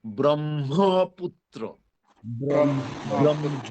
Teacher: প্রথম ম অল্পপ্রাণ পরের মহাপ্রাণ